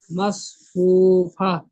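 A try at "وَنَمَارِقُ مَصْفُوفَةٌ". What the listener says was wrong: র টান হয়ে যাচ্ছে, কফ টান হয়ে যাচ্ছে। ওয়ানামারিকু মাসফুফা।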